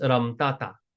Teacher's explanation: most of the time people they actually drop the ha